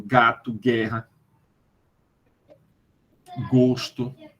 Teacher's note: o dorso da língua Vai na direção do palato mole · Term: sons velar